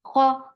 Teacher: Kho is heavy. For fatha, open your jaws. The sound is short. Kho. Kho is short.